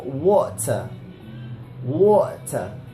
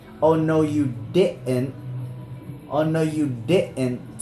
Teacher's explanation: it's called a glottal stop, which actually does exist in English.